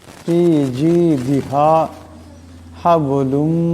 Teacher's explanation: এখানে বা সাকিন, বা হলো কলকলার হরফ, তা আওয়াজটাতে টক্কর খাবে।